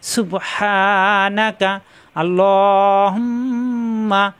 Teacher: বুঝতে পারছেন সবাই শুদ্ধ পড়ার চেষ্টা করবেন সুব এই সুব ধাক্কা হা কণ্ঠনালীর মাঝখানে চাপ দিয়ে